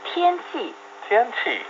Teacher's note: 天 the first tone and 气 the fourth tone.